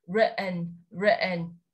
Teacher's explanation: Bởi vì có một quy tắc nhỏ nhỏ, đó là nếu như chúng ta có tổ hợp TN đứng cạnh nhau trong American English, mọi người tách ra cho mình và đọc là writ, để im vào đấy một giây, và sau đó chúng ta kết thúc với âm n